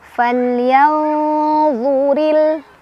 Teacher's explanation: nun sukunnya dibaca samar sambil berdengung. Nah, untuk ikhfa ausat ini karena makhrajnya terutama huruf lo itu tidak terlalu jauh dan tidak terlalu dekat dengan nun, maka ini tingkat samar sama dengungannya itu seimbang ya.